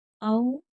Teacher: औ वाव लीन है, यहाँ पर थोड़ा जल्दी के साथ पढ़ेंगे, नरमी के साथ, झटका नहीं लगाएंगे और ना ही खींच कर पढ़ेंगे।